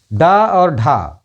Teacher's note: डा और ढा उत्क्षिप्त व्यंजन है क्योंकि इनको बोलने में जबान जो है एकदम से कंपन करती है, जैसे ऊपर ला के झटके से चलती है, इसलिए वो उत्क्षिप्त व्यंजन कहलाते हैं।